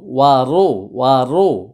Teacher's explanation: র পেশ রো মোটা হবে